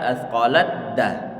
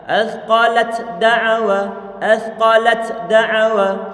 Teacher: huruf ta dia telah didhamkan pada huruf dalnya sehingga menjadi satu huruf dal yang bertasydid. Kalau sudah diidghamkan dan sudah diganti dengan tasydid itu dari segi suaranya, maka sifat-sifat yang dimiliki oleh huruf ta hilang.